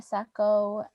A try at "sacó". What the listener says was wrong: No, está bien. I was hearing something else, but it was just me.